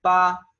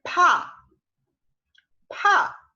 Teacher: La B en chino se pronuncia como una P del español, pa, y la P se pronuncia como una P, pero expulsando aire